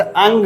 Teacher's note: अनुस्वार और अनुनासिक में एक अंतर देख लीजिए कि वे नासिक ध्वनियाँ जिनका उच्चारण स्वर के बाद किया जाता है, अर्थात अनुस्वार क्या होता है कि पहले स्वर का उच्चारण किया जाता है, उसके पश्चात अनुस्वार का उच्चारण किया जाता है। जैसे अंग में पहले अ बोला जाता है, फिर ङ बोला जाता है